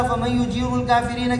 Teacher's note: اسی طرح فَمَن يُجِيرُ الْكَافِرِينَ کے اندر ادغام تام ہے، یہ ادغام تام جو ہے نا کیا نام ہے خلف کے لیے نون ساکنہ تنوین کے بعد واو اور یا آنے کی صورت میں ادغام تام کرتے ہیں، جس طرح لام اور را میں ادغام تام کرتے ہیں، یعنی غنہ نہیں کرتے ہیں۔